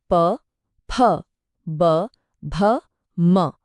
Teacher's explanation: हर अक्षर को बोलने में दोनों होठ एक दूसरे से मिल रहे हैं। बस यही है इन ध्वनियों का उच्चारण स्थान। · अब ओष्ठ्य का सीधा सा मतलब है होठों से जुड़ा हुआ। इन्हें बोलने के लिए दोनों होंठ एक दूसरे को छूते हैं, हवा को एक पल के लिए रोकते हैं और फिर छोड़ देते हैं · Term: ओष्ठ्य वर्ण